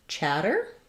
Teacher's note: Chatter has first syllable stress and it has the a, black cat vowel.